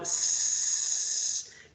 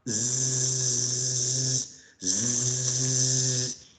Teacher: If you produce s, you put your fingers here on your throat, s, you're not going to feel vibration. But if you produce the sound zzz, zzz, you should feel vibration in your throat if you press your fingers in your throat.